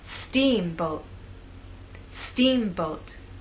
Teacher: in the second part steamboat now let's put it all together making the first part of the word louder longer and at a higher pitch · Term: word stress